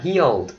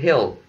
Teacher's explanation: Cái âm này là âm tense vowel, còn cái chữ hill kia là âm lax vowel. Đó là cái vowel mà mình thả lỏng cái miệng.